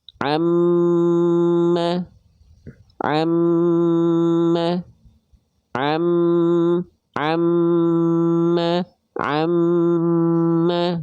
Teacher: sama mim juga ketika kita lafalkan-nya itu nempel em terus ketika em dilafalkan masuk ke hidung makanya dia ditahan dulu dua harakat · mereka enggak dibaca ditekan tapi dia dibaca harus ditahan jadi kadarnya lebih lama ditahannya dua harakat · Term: gunah